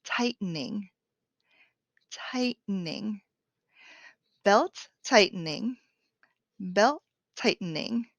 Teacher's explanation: the t is a stop t i'm going to stop the air in my mouth to make the illusion of a t but i'm not going to make that hard t sound tightening